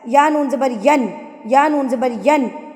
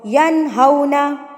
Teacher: تو حمزہ ہا, عین ہا, غین خا آ جائے تو وہاں پر آپ نے نون کو ظاہر کر کے, یعنی کہ اس کی ادائیگی جلدی سے کرنی ہے. آپ نے اس کو غنہ نہیں کرنا, صرف یہ بتانا ہے کہ یہاں پہ نون ہے بس. یا نون زبر ین, یا نون زبر ین, اس طرح نہیں پڑھنا. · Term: اظہار